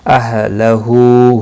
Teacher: ہو ہا کے اوپر الٹا پیش ہے، ایک الف کے برابر کھینچ کر پڑھیں گے